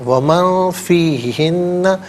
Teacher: لازم نون ساکن کے بعد فا حرف اخفا، تو نون ساکن کو اخفا کے ساتھ پڑھیں گے، یعنی ناک میں آواز لے جا کر گنگنانا